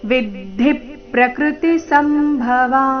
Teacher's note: ವಿದ್ಧಿ ಪ್ರಕೃತಿ ಸಂಭವ ಸ ಮೇಲೆ ಆಘಾತ